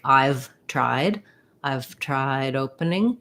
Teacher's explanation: my d gets released right into the o of opening